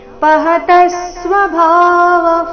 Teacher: ಪಹತಸ್ವ ತ ಮೇಲೆ ಆಘಾತ